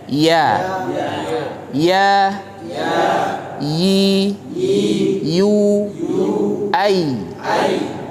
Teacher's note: huruf ya ya itu keluar dari lidah bagian tengah